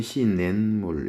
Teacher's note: 발음이 시냇물 이런 식으로 니은 소리가 덧나고 있죠. 이것도 사이소리 현상이에요.